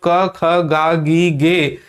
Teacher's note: जैसे ही हम क बोले खत्म हो गया वह उसके बाद जो अंतिम ध्वनि आ रही है वो अ की आ रही है